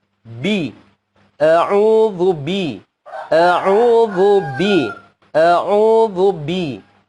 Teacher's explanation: ketika kita menyebut huruf ba, dia harus menempel keras pertemuan bibir atas dengan bibir bawah. Itu menempel dengan keras.